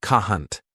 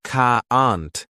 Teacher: British people say can't like cahant, but Americans say caant with a strong a sound.